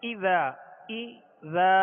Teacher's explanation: اذا جاء نصر اللہ والفتح، اذا میں شروع کا جو حمزہ ہے اس کے نیچے زیر ہے، اس کو دراز نہیں کریں گے۔ اذا اب زال کو ہم نے جو دراز کیا اس کے آگے الف ہے اور ایک الف کی مقدار اس کو کھینچ کر ادا کریں گے